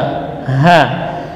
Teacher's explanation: itu makhrajnya dari pangkal tenggorokan, akan tetapi dari arah dada.